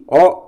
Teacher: ఓ అనేటువంటిది కంఠము మరియు ఓష్టాలకు సంబంధించినటువంటిది. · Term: కంఠ్యోష్టం